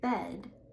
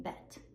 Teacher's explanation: instead of saying bed, you don't voice the D and you end up saying bet